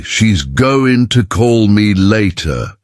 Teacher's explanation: Did you notice how going to becomes gonna? That's called connected speech.